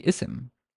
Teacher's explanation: It's basically when you're starting to speak and you are starting with this word, you have to pronounce an imaginary hamza. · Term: glottal stop